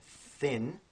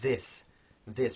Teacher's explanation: So that difference in phonetics is called voiced and voiceless. So the thin is voiceless, and the th in this is called voiced.